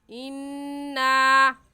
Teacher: اِنَّا میں نون مشدد ہے، اور نون مشدد پر ہمیشہ غنہ ہوتا ہے